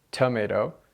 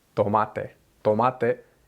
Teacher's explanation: in the Spanish version you don't feel air coming out of your mouth when you say tomate and that's because your tongue is against the back of the